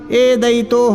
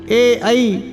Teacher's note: ए ऐ ये कंठ तालव्य वर्ण हैं, इनका उच्चारण स्थान कंठ तालु है। दो उच्चारण स्थान है ए ऐ का, कंठ और तालु।